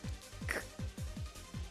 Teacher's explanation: La K suena k, es oclusiva, velar, sorda.